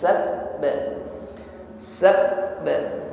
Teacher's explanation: ketika mengucapkan ba tasdid di sini ditekan ketika mengucapkannya sab sab ketika menekan huruf ba bertasdid ada aliran suara yang tertahan nah ini adalah sifat syiddah yang dimiliki oleh huruf ba tertahan